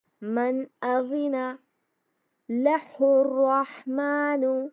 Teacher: نون کی آواز کو ظاہر کر کے پڑھیں گے. من اذن لہ الرحمن، ہا کو را سے ملائیں گے اور اس کو رحمان پڑھیں گے. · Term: اظہار